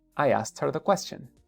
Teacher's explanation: no se coman la T, cómanse la K